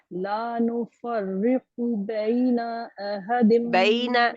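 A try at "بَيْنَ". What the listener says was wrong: بین بس بینا نہیں ہے،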